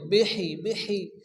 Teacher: এই হাকে মুখ দিয়ে বাতাস বাইর করে উচ্চ করে পড়তে হবে